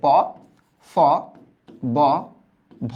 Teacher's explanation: দেখবা উপরের ঠোট আর নিচের ঠোটটা বাড়ি খায় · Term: ওষ্ঠ